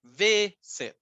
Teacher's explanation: La palabra visit, claro, tiene consonante, vocal, consonante, pero la forma en la que pronunciamos es visit. La fuerza de voz está en la primera sílaba, no en la última.